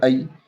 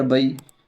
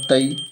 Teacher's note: یا لین کو نرم آواز کے ساتھ جلدی جلدی پڑھیں گے